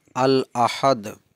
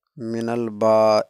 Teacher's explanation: لام تعریف کو ظاہر کر کے پڑھا جائے گا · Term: لام تعریف کا اظہار